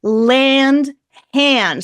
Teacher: It's /æ/ with a nasal. With an n after it.